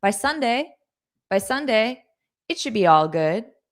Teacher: even in spoken English at fast pace, I still took a pause after Sunday because there's a comma. And the purpose of the comma is to tell you to take a pause.